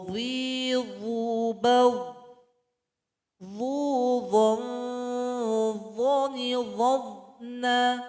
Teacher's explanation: Sifat dari huruf dha ini adalah ketika membacanya suara kita naik ke langit-langit, isti'la. Kemudian suara kita isbak terkumpul antara lidah dan langit-langit.